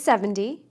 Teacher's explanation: the T in the tens sounds more like D